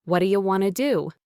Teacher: Notice how what do you became what'ya and want to became wanna.